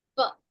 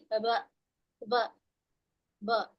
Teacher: You need to close it a little tighter for p, okay, not as much for b. And when you say p, you don't feel the vocal fold vibrating as much. But when you say b, there's a lot of vibration here.